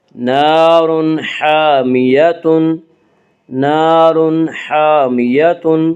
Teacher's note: الف مدہ کو ایک الف کے برابر کھینچ کر پڑھیں گے۔